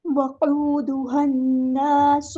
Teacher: نون پہ غنہ زمانی اور ایک الف کے برابر رکیں گے